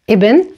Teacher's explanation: Ibn starts with a short vowel e.